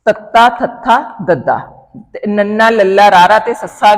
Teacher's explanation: ਵੈਸੇ ਤਾਂ ਸਾਨੂੰ ਪਤਾ ਲੱਗ ਜਾਂਦਾ ਜਿਨਾਂ ਨੂੰ ਉਚਾਰਨ ਕਰਨ ਸਮੇਂ ਸਾਡੀ ਜੀਭ ਦਾ ਜਿਹੜਾ ਉਹ ਅਗਲਾ ਹਿੱਸਾ ਨੋਕ ਆ ਜੀਭ ਦੀ ਕਹਿ ਲਓ ਉਹ ਦੰਦਾਂ ਦੇ ਉੱਪਰਲੇ ਪਾਸੇ ਉੱਪਰਲੇ ਦੰਦਾਂ ਦੇ ਪਿਛਲੇ ਪਾਸੇ ਨਾਲ ਜਿਹੜਾ ਟਕਰਾ ਕੇ ਜਾਂ ਕਹਿ ਲਓ ਸਪਰਸ਼ ਕਰਕੇ ਹਵਾ ਨੂੰ ਰੋਕਦੀ ਆ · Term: ਦੰਤੀ ਧੁਨੀਆਂ